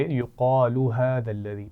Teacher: لام کو لمبا نہیں کھینیں گے